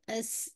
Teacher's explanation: सीन पे आपकी whistling sound है · है लेकिन सीन के अंदर क्या है आपकी जो जबान है आपकी टिप ऑफ द टंग है आपकी दांतों के पीछे रहेगी तो उसकी वजह से क्या है कि एयर ट्रैप होगी